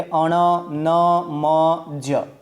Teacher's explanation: જે વ્યંજનો પોતાના સ્થાન ઉપરાંત નાકમાંથી બોલાય તેને આપણે અનુનાસિક વ્યંજન કહીએ છીએ